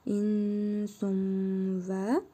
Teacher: İdğam-ı məal qunnə qaydasına görə tənvindəki nun hərfini bir əlif miqdarı uzadaraq burnumuzda tələffüz edirik. Vav hərfini isə şəddəli tələffüz edirik.